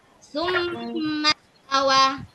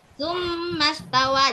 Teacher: Jadi di mim yang bertasdik kita tahan 2 harokat. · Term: gunah